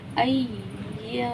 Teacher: इसलिए खींचा क्योंकि यहाँ पे अलिफ मद्दा हो रहा है, अलिफ खाली है, उससे पहले ज़बर है तो अलिफ मद्दा हुआ। इसे हम 1 से 2 मिकदार खींच कर पढ़ेंगे।